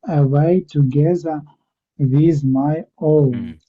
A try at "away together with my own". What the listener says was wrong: Yes, very good. That is very good, actually. Well done.